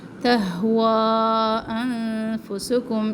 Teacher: تہوا انفسکم یہاں پہ مد منفصل ہے، اس کو بھی 3 الف کے برابر لمبا کرے. تہوا الگ کلمہ ہے اور انفسکم یہ الگ کلمہ ہے، تو یہاں مد منفصل ہے.